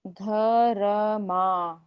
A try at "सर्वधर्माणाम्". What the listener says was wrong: र पूरा नहीं, र आधा, धर्म। ऊपर भी देखो, च के ऊपर रेफ की मात्रा है, तो बोलते कैसे है, कमर चंत।